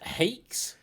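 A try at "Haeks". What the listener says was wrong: I think I think it was supposed to be pronounced as Hex. Just drop the A. The A is silent.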